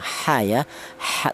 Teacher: huruf ha ini keluarnya huruf berasal di tengah tenggorokan sama dengan huruf ain